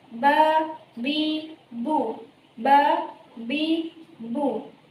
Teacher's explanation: apabila ia diucapkan, maka makhrajnya itu terletak pada dua bibir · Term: huruf ba